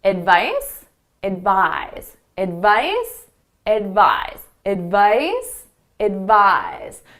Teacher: So the second syllable is the one you hear louder and longer.